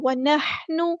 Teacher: ہا کو وسطی حلق تھوڑا سا ادا کریں گے، نون کے پیش کو لمبا نہیں کریں گے